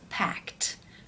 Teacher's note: that is the t t sound for example the word pack when you add the ed it becomes packed because the k sound is unvoiced